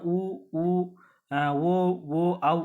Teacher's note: வாய் திறக்கும் முயற்சியுடன் இதழ்களை குவிப்பதனால பிறக்குது